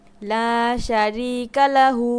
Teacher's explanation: হু টান হবে এক আলিফ